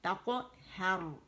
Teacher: ہم نے قاف کا مخرج چھوڑ کے پھر ہا کے مخرج پہ جانا ہے